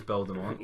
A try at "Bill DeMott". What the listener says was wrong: Bill DeMott. Well, you keep saying like Bill DeMont, as if he's building a mountain. Aye, Bill DeMott, not You keep saying DeMont. Bill DeMont.